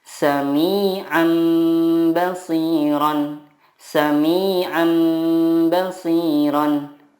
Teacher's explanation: Cara membacanya, mengganti nun sukun dengan mim sukun dan disertai guna 2-3 harokat. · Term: iqlab